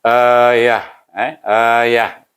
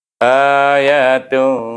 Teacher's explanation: apabila kita wakafkan kita hanya menggunakan huruf ha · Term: wakaf dengan ha